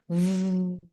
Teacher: Where your upper teeth touches the lower lip and you say V. There's a vibration happening.